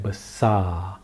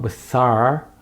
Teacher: the r at the end of the word like this can you hear the r there's no r you cannot hear the r the r is not sounded it's a silent r so when